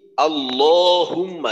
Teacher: আল্লাহুম্মা লামটা পাতলা না হয়